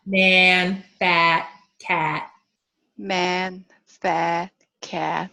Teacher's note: my jaw has to be open my lips have to be retracted because it's bottom front